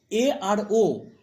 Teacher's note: এ আর ও এই দুটোকে বলছি উচ্চমধ্য স্বরধ্বনি আবার অর্ধ সংবৃত্ত স্বরধ্বনি বলছি নিচে হলুদে যাও দেখো এ আর